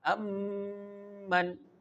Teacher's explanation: The sound is held at the lips. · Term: idgham shafawi